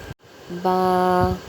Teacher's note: ہونٹوں کے تری والے حصے آپس میں ملنے سے با ادا ہوتا ہے۔